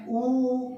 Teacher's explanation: ऊ बोलते समय दोनों मिलते तो नहीं हैं, लेकिन गोल आकार हो जाता है ऊ, है ना। तो इसलिए ये होठों से ही बोले जाते हैं, यही इनका उच्चारण स्थान है और ये ओष्ठ्य वर्ण कहलाते हैं।